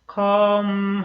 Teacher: come의 M 발음은 come 하면서 M이 닫혀야 되는 발음이고